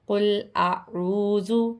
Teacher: یہاں پہ حمزہ کی آواز اور عین کی آواز کو الگ الگ کر کے پڑھنا ہے۔ قل اعوذ، اعوذ نہیں، اعوذ۔